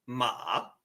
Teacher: It almost sounds like you're asking a question. So your second tone sounds like ma, ma. It starts down here and raises up.